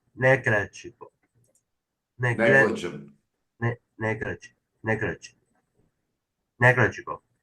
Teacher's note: Put the emphasis on the first syllable.